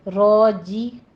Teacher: جیم کی آواز کبھی آپ را جی نہیں کہنا، چی یہ آواز نہیں آنی چاہیے